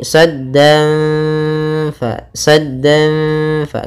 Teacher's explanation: kita tahan gunanya sambil kita samarkan suara tanwinnya kepada huruf Fa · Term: ikhfa Hakiki